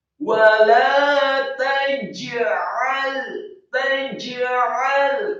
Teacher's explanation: Wala taj'al, kata wala taj'al, lam yang fathah dua harokat, kemudian taj'al setelah ta yang fathah, kemudian jim yang sukun dibaca tebal dan diqalqalahkan · kemudian ainnya ditekankan keluar dari tenggorokan fathah dan lamnya disukunkan